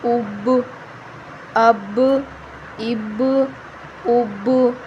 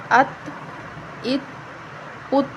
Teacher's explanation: اب تا کو ہلانا نہیں ہے، ٹھیک ہے؟ ہم اس پر قلقلہ نہیں کریں گے کیونکہ یہ حروف قلقلہ میں سے نہیں ہے